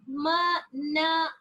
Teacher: all these sounds are nasal sounds which are produced when the oral cavity is closed and because the soft palate is lowered the nasal cavity is opened and the sound and the air escapes through the nostrils or